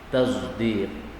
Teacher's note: Yaitu shad dicampur dengan zain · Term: ismam